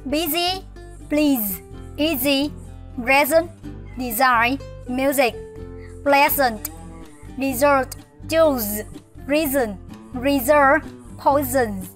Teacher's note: chữ S, nó nằm giữa hai nguyên âm, hoặc là nó nằm giữa một nguyên âm và bán nguyên âm, thì chúng ta sẽ đọc là Z